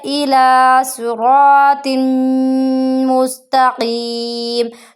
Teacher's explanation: ہم قاف کو موٹا بھی پڑھیں گے اور ایک الف برابر اس کو لمبا بھی کریں گے